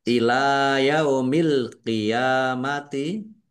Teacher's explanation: Lam fathah berdiri. Mad thobi'i panjang dua harakat. Alqiamati alif lam qamariah ditandai lamnya dibaca sukun.